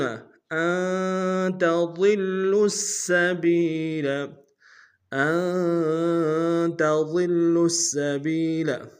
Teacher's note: ہے، غنہ کریں گے، تا کو نون سے ادا کریں گے، ضاد کو موٹا ادا کریں گے، لام کے سامنے لائیں گے، لام کے اوپر تشدید زور دیں گے